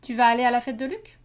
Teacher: it's just the same syntax as an affirmation with uh interrogation and rising intonation